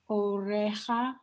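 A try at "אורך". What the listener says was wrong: Not re. Oracha. Orcha.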